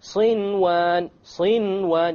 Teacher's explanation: Without any ghunnah, you make the noon clear and you move on. Why? Because it's in one word. · You pronounce the noon. In this case, the ruling would be idhar. You make it clear. Okay? Without any ghunnah, you make the noon clear and you move on.